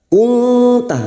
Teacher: Kunta nun sukun bertemu ta ikhfa hakiki kita samarkan bunyi nun sukun dan mendengung selama 3 harakat.